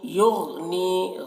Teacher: युग़नी गैन को पूर पढ़ना है और गैन में कलकला ना होने पाए इसका ख्याल रखना है